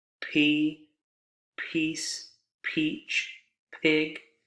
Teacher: the main difference being aspiration the burst of breath